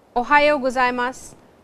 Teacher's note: ohayo-gozaimasu with a rising intonation